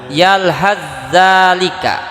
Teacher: sa dan za satu makhraj dari ujung lidah nempel ke ujung gigi bagian atas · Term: idgham mutaqaribain